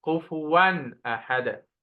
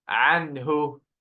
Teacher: You should not do any ghunna because the next letter is one of the clarity letters which will make the tanween clear. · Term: clear tanween